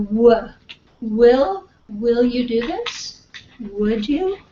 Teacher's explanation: it doesn't really stop the air flow right you've got W there's nothing really touching but your lips come so close together that it almost stops the air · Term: semivowels